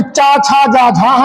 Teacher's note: इनको स्पर्श संघर्षी, क्योंकि इनके उच्चारण में घर्षण होता है